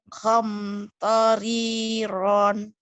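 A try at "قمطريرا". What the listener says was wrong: Khom, bukan hom. Khom toriron.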